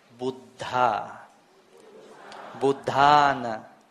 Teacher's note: The D and the DH, they are two different letters, two different consonants. So the H is audible